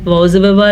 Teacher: واو کو بالکل بھی لمبا نہیں کرنا کیونکہ واو کے اوپر زبر ہے